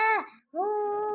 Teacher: پیش ہے، الٹا پیش برابر ہے واو مدہ کے، اس لیے الٹا پیش کو واو مدہ کی طرح کھینچ کر پڑھیں گے، الٹا پیش میں ہونٹ گول ہوں گے